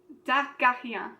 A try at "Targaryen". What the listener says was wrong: Pas mal.